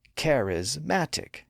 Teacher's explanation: become charismatic it becomes charismatic so in that four syllable version the stress is moved from the second syllable to the first and third that gives us a more balanced stress path pattern up down